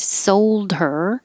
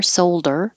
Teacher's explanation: you can get rid of the H in her